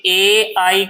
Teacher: ए ऐ का उच्चारण कंठ और तालु दोनों से होता है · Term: कंठ तालव्य वर्ण